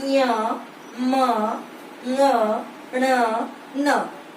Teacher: नाक में आपको ध्वनि सुनाई देगी, महसूस होगी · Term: नासिक्य